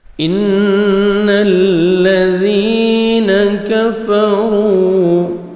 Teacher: نون مشدد غنہ کریں گے، نوز میں ساؤنڈ لے کے جائیں گے